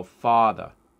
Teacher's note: for many New Yorkers, for example, they will say, they will do a slight rounding and go, father.